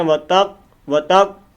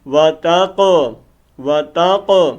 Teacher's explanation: اب دیکھو نا یہ قاف موٹا ہے، کلکلے والا ہے، ٹھیک ہے۔ وتق، وتق نہیں کرنا، بات پڑھتے ہیں وتق، وتق، یہ غلط ہے، وہ بریک قاف ہو جاتا ہے، یہاں پر کلکلا کرنا ہے، آواز کو ہلانا ہے.